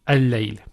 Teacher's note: Because this is from huruf al-shamsiyya. So the first lam does not get pronounced. So it will be al-layl.